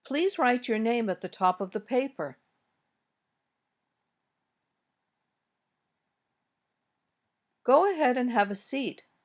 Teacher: usually goes down at the end when we make requests or commands